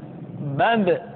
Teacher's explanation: ba dikeluarkan dengan cara merapatkan kedua bibir kita ba bi bu ketika mati maka terdengar suara pantulan